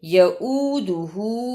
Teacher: واو کی آواز نہیں آنی چاہیے، حمزہ کی آواز آئے